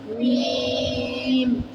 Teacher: میم کا تعلق ہمارے ہونٹوں سے ہے. ہمارے ہونٹوں کو آپس میں ملائیں گے جب تو ادا ہوگا میم